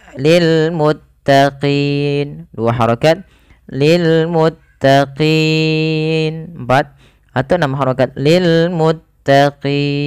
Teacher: Tatkala adanya sukun arid di akhir bacaan ketika maaf di akhir bacaan kita ketika kita waqaf awalnya lil muttaqina karena kita wakafkan nunnya dimatikan dan apa namanya untuk qi itu kita panjangkan boleh kita boleh memilih antara dua harakat boleh juga empat harakat dan boleh pula enam harakat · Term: mad arid lisukun